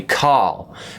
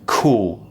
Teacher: i'm doing a very round shape with the mouth and the tongue goes back